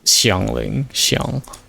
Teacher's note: If you're like from Beijing, China, you would pronounce the the h sound a little a little more.